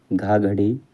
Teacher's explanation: कंठ महाप्राण घोष व्यंजन वर्ण का उदाहरण है